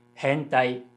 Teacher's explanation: So I can say hentai has a low, high, high, high pitch pattern.